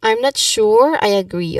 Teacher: Also emphasize on sure, the word sure.